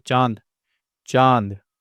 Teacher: चांद चांद देखिए नाक और मुंह दोनों का इस्तेमाल हो रहा है। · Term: चंद्रबिंदु, चंद्र बिंदु